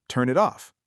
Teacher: The N in turn links into it and the T in it links into off. Try it as one flowing sound.